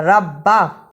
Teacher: را کو پر پڑھنا، با پہ شد ہے، اس کو بھی ادا کرنا